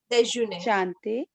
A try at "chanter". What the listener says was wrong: शौनते, CH will be shaw, okay, शौनते, okay, CH will be shaw, शौनते, not chanting, it's not chanter, shante, okay, sure, CH will be sure, shante, okay